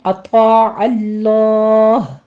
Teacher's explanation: اطاع میں طا پر پڑھتے ہوئے الف مدہ بھی پر ہو جائے گا ساتھ، اور عین وسطے حلق سے ادا کرنا ہے۔ اطاع اللہ، اگر آپ نے ملا کے پڑھنا ہے تو لفظ جلالہ اس طرح سے بھی پر پڑھا جائے گا۔